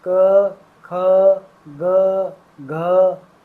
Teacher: ना तो जीभ हिलती ना दांत हिलते, कुछ नहीं, सिर्फ कंपन होता है। कहाँ पर? गले में।